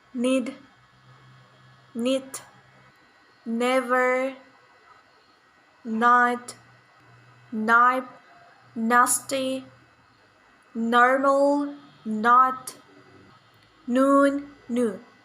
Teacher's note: voiced alveolar nasal sound na, ni, need, knit, never, night, knife, nasty, normal, not, noon, new.